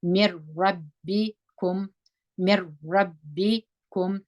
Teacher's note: را سره وجنګوي دغه نون په دا را کې مدغم سوی دی ګډ سوی دی موږ دلته د را په اواز وایو میم میم په زیر د را سره جنګو نون نه ویل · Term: پوره ادغام